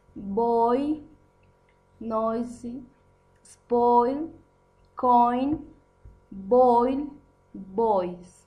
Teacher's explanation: It involves movement from the position of other low back to the position of long E, high front. It sounds like oi. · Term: oi the boy